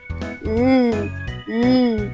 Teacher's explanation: Rito naman ang hanging lumalabas ay sa gilid ng dila sapagkat ang dulong dila ay nakadiit sa punong gilagid. Ito naman ang halimbawa ng paraan ng artikulasyong pagilid.